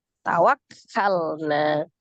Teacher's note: Ada lam sukun di situ sifatnya tawassut. Hati-hati lam sukun jangan dipantulkan ya, karena sifatnya hanya mengalir · Tawakkalna, tasdid di huruf kaf ya. Kaf itu sifatnya seddah, tapi dia alhams. Maka seddahkan dulu, baru alhams. Maksudnya disukunkan dulu, baru dialirkan nafasnya.